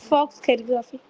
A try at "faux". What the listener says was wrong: Okay, तो हम इसको फॉक्स नहीं पढ़ते, हम इसको फॉ पढ़ते हैं, ठीक है? ये आपकी मिस्टेक नहीं है, ये मोस्टली सभी की यही मिस्टेक होती है कि वो उसको फॉक्स कैलीग्राफी पढ़ते हैं, ठीक है? It's not फॉक्स.